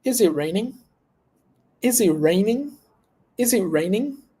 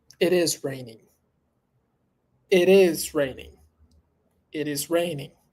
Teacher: raining the word raining at the end is and a falling a falling intonation so that's the difference